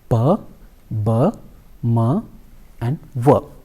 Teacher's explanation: there is a blockage of air in the mouth and the sound is produced because there are two lips involved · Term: by level consonants